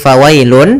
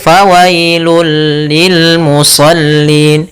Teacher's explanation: Pada dasarnya tanwin itu an, in, ataupun un itu adalah bunyi nun sukun, bunyi nun yang dimatikan atau bunyi n. Maka ketika dia masuk, bunyi n-nya hilang, langsung masuk ke hurufnya yaitu bunyi lam. Maka fawailul, bukan lagi fawailun tapi fawailul lil musallin. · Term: idgham bila gunnah